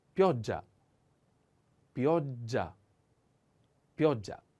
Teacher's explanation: The accent on O. And pay attention to this double consonant sound. Is a little strong.